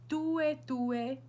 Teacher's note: So you want to have like a dental T.